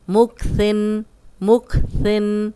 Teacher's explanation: ثا کو نرم پڑھیں گے، سیٹی کی آواز نہیں آئے گی